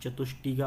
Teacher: ट आ गया तो ट मूर्धन्य होने के कारण मूर्धन्य से परिवर्तन हो गया